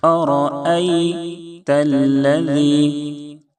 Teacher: ذال پڑھتے ہوئے زبان کی نوک اوپر کے سامنے والے دانت پہ لگائیں گے · دونوں جگہ حمزہ کو تحقیق سے ادا کریں گے. بعض مرتبہ یہ جو دوسرا حمزہ ہے یہ حذف ہو جاتا ہے، ختم ہو جاتا ہے، جلد بازی میں پڑھنے کی وجہ سے زائل ہو جاتا ہے.